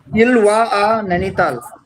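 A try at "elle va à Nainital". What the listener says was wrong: इलवा. Don't say ill. Ilva a Nainital.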